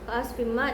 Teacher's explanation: Terus yang kedua ada di kalimat ka'asfim ma. Di sini adanya kasratain bertemu dengan ma, hukumnya idgham guna, cara bacanya masuk dengan dengung